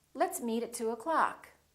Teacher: reduce the o in the word o'clock